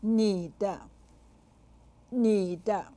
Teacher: the third and neutral tones are used